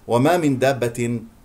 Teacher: نون مع الدال اخفاء نذهب الى مخرج الدال نلامس مخرج الدال ولا نضغط بحيث انه اذا انتقلنا الى الدال ضغطنا على